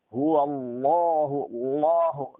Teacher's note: bila jatuh setelah fathah atau setelah dhammah, dibaca hurufnya dengan tebal. Jadi huwallahu, Allahu, lamnya harus dibaca dengan tebal.